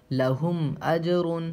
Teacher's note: میم ساکن کے بعد حمزہ آ رہا ہے تو اس لیے یہاں پہ غنہ اخفا کچھ نہیں ہوگا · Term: اظہار شفوی